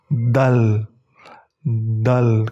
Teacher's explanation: Jadi cara membaca huruf Dal, ujung lidah kalian itu berada di pangkal gigi seri atas